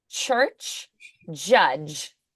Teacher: the ch like ch, that is unvoiced, and then like a j sound, judge, that is voiced.